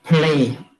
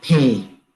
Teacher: deletion of second element of English consonant cluster